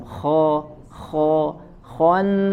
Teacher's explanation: Ya, kemudian kho-nya sempurnakan tebal, ya, bukan khannas kho, tapi tebal, diangkatkan lagi pangkal lidahnya dan suaranya dikeataskan.